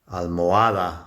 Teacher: almohada, it's the A towards the end, that's a strong syllable